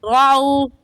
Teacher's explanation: वाव साकिन से पहले ज़बर आ गया तो वाव लीन कहलाएगा, और लीन को खींचकर नहीं पढ़ते बल्कि जल्दी से पढ़ जाते हैं। ऐसे पढ़ेंगे रअऊ तिजारतन।